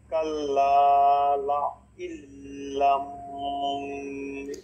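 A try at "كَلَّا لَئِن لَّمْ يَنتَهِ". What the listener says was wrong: না এখানে গুন্না নাই লা ইল্লাম ইয়ান্তাহ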